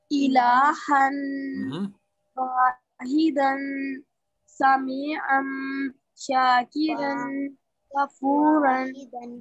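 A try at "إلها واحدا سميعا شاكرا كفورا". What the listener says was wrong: Good. MashaAllah.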